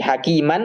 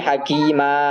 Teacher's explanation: kalau tanwin tidak terbaca suaranya berubah menjadi a. Kayak tadi hakiman kalau kita berhenti jadi hakima suaranya hilang berubah dia. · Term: dibaca waqaf